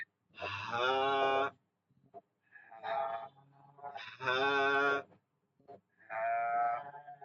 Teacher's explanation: হা গোল হাটা হচ্ছে গম্ভীর আওয়াজ, এখান থেকে বাতাস বন্ধ হয়ে যাবে